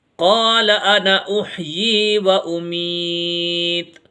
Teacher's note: انا ہمیشہ جلدی پڑھا جاتا ہے، نون الف زبر نہ، الف آ رہا ہے لیکن پھر بھی اس کو جلدی پڑھیں گے۔